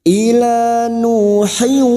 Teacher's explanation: siap masuk dan mendengung masuk pada huruf berikutnya, yaitu huruf wawu, dan mendengung selama 2 atau 3 harokat.